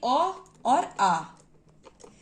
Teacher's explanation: ये अ और आ कंठ से बोले जाते हैं